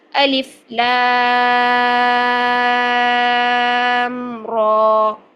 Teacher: کھڑی زبر چونکہ الف مدہ کے قائم مقام ہوتی ہے تو را کو ہم پھر 2 حرکات لمبا کریں گے. ٹھیک ہے، لام کو 6 حرکات لمبا کریں گے مد کی وجہ سے، اور را کو 2 حرکات لمبا کریں گے کھڑی زبر کی وجہ سے، کیونکہ کھڑی زبر الف مدہ کے قائم مقام ہوتی ہے اور اس کو ہم 2 حرکات کھینچ کر لمبا کرتے ہیں. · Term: مد لازم حرف مخفف